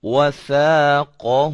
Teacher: زبان کی نوک کو ثنایا علیا جو کہ اوپر والے دو دانت ہوتے ہیں ان کے کنارے پہ لگاتے ہیں تو ثا ادا ہوتا ہے. وثاقہ.